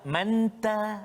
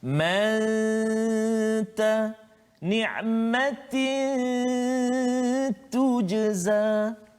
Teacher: Dia tetap kena ada dengung, kan? Sembunyikan kesempurnaan huruf nun itu ke dalam huruf ta. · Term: ikhfa hakiki